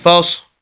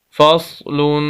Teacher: فا کو ہم صاد کے ساتھ ملائیں گے اور صاد کو موٹا کر کے پڑھیں گے۔ یہ موٹے حروف اور پر حروف میں سے ہے۔